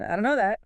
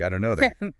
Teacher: Often the D and T sounds merge or weaken sounding like done or similar. And know that links closely.